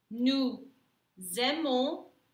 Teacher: because this verb happens to start with a vowel, you're going to have what we call the flying Z sound